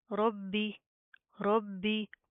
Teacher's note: बा के ऊपर तशदीद है, सख्ती से जमा कर पढ़ेंगे